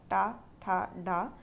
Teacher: टा ठा डा मूर्धन्य वर्ण है